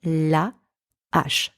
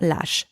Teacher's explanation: the h from the word ash is an aspirated h, I can't do an el.